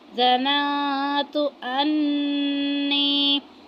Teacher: اب نون ساکن کے بعد تا آ رہا ہے تو یہاں پہ اخفا کی صورت میں غنہ کریں گے